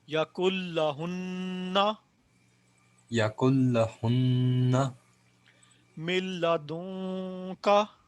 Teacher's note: ये ना हो कि हम ये तो पढ़ रहे हैं कि जी ये इदगाम नाकस है तो ये हुन्ना लंबा ना करें, ये सॉरी यहाँ पे आवाज़ ना ठहराएं। नून मुशद्दद मीम मुशद्दद पे आवाज़ रुकती है, ठहरती है, एक अलफ जितनी हम लंबी करते हैं उसको।